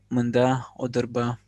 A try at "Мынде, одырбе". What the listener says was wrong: Мынде, вот смотрите по произношению. Мынде, не мында, а мынде, одырбе. Мынде, одырбе. Просто мынде.